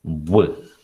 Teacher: there is a rounding of the lips you round the lips to pronounce the sound